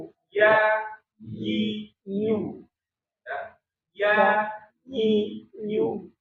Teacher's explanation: Ada penekanan dia, kayak iya tapi bukan iya, ya, iu, ya ada penekanan, bukan ya iu tapi ya, iu, ya, iu, bukan ya iu ya, karena dia ditempelkan tuh, ya, bagian langit-langitnya, yang persis di langit-langitnya. Tengah lidah nempel ke langit-langit. Jadi iu. Di dua huruf ini nih, huruf ya sama huruf waw nanti ketika dia dalam kondisi bertasydid ada penekanan ya.